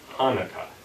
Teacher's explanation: pronounced it as an aspirated H